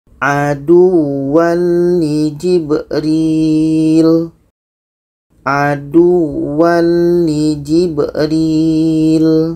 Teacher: Dan ini tanwin bertemu lam bermakna tidak dengung.